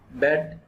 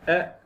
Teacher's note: the jaw is approximately half open, tip of the tongue is behind the bottom teeth. जो हमारी tip of tongue है वो पिछले दांतों के पीछे होगी। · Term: front vowel